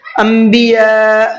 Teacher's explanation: انبیاء یہاں پر بڑا مد ہے، بڑا مد کو 4 سے 5 الف کی برابر کھینچ کر کے پڑھنا ہے۔